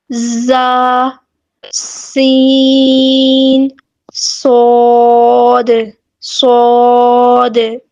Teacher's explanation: ان کو حروف صفیریہ کہا جاتا ہے اور سیٹی والے حروف بھی کہا جاتا ہے کیونکہ ان کو ادا کرتے وقت سیٹی کی آواز پیدا ہوتی ہے